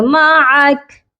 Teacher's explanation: ٹھیک ہے، اوما میم میم مم، میم زبر ما، عین زبر ع، مع، کاف زبر کا، معکا. اب یہاں پر ہم وقف کریں گے تو کاف کی جو زبر ہے وہ ڈراپ ہو جائے گی